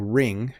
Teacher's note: Ring, though, like I am wearing my wedding ring, it's the same as rink, but there's no hard stop.